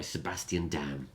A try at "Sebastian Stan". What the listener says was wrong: Stan. You said Dan.